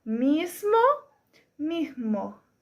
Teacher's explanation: si se aspira la s sería mismo estoy poniendo la J en lugar de la s ven La diferencia mismo mismo como segundo ejemplo en la aspiración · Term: aspiración de la s